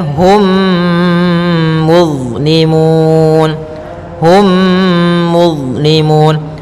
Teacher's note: masukkan mimnya kepada mim setelahnya dan ditahan. Hum, tahan gunnahnya. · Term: idgham mimi